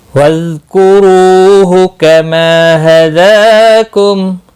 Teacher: کما ما الف مدہ ہے، ایک الف کے برابر کھینچ کر پڑھیں گے۔ دال کے اوپر کھڑی زبر ہے، ایک الف کے برابر کھینچ کر پڑھیں گے